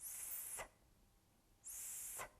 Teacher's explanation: Из-за этого звук произносится с трудом, не слышно даже голоса, только шум, похожий на свист. Значит, это согласный звук.